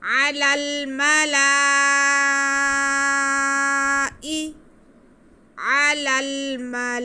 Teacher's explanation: ان کو پڑھنے کے لیے ہم مد متصل کریں گے، اور مد متصل پڑھنے کیسے کریں گے؟ ہم لام کو کھینچ کے پڑھیں گے 4 الف کے برابر، اور اس کے بعد حمزہ ادا کریں گے